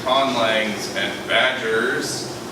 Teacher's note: You get z before non-sibilant voice sounds, as in conlangs and badgers